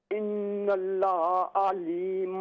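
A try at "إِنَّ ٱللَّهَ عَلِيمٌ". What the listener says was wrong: ये हा को दुरुस्त करें ना, हा को क्लियर करके पढ़ें। इन्नल्लाह। ना हा को ठीक कीजिए। इन्नल्लाह, ना इन्नल्लाह, लहा नहीं है, लहा, लाम को पहले लंबा करें। इन्नल्लाह, आप सुने जरा, इन्नल्लाह, ये जहाँ पर देखें इन्नल्लाह अली, इसी तरह आऊज़ु बिल्लाहि, आऊज़ु बिल्ला, लाम पर खड़ी ज़बर है, आऊज़ु बिल्लाहि मिनश शैतानिर रजीम।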